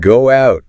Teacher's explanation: Go out. There's a little W in there.